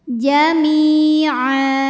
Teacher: Maka cara bacanya huruf mim ini kita panjangkan 2 harokat saja. Jami'a. Jika kita berhenti di ain, di a, maka ini dihukumi dengan mad iwad. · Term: mad tabi'i zahiri